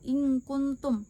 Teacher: dengan menyamarkan nun mati atau tanwin dengan mendengung sepanjang 2-3 harakat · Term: ikhfa hakiki